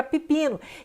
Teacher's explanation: O E aqui, ele é seguido de uma vogal alta, o I. Então, para se harmonizar, ele vira I também, ficando alto como o I é.